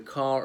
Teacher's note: Notice the non-rhotic pronunciation of car. It just sounds like a double A rather than car.